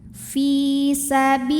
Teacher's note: Fi bi di sini juga sama, hukumnya adalah matobi'i zahiri sebab ada ya sukun yang sebelumnya baris kasrah, maka huruf ba ini panjangkan 2 harokat